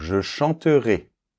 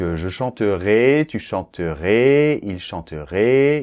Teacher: le -AIS doit être assez ouvert, théoriquement, mais suivant les régions en France, on a tendance à le fermer un petit peu.